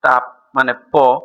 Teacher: দুই ঠোঁট অর্থাৎ উপরের ও নিচের ঠোঁটের সাহায্যে উচ্চারিত ধ্বনিগুলো হলো দ্বিওষ্ঠ